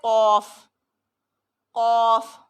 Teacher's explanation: قاف ہمیشہ ہر صورت میں موٹا پڑھا جاتا ہے، اس کو کاف نہیں پڑھتے